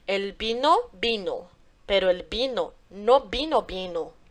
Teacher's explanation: o sonzinho do V, porque em espanhol ele é pronunciado como a letra B